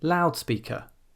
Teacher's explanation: there are compound nouns which start with adjectives, and yet the stress will be on the first syllable. So loud is an adjective, but we don't say loudspeaker, we say loudspeaker.